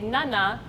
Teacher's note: the tip of your tongue is touching your alvolar ridge, right? So when you make an sound, it has to be touching, totally touching, right?